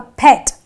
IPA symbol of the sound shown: ɛ